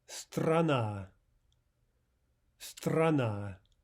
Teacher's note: Two syllables, two ahs. The second is stressed, and the first is directly before the stressed syllable. Therefore, we have ah in both cases.